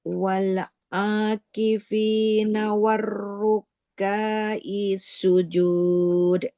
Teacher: Kafnya enggak panjang karena fathah tidak ketemu alif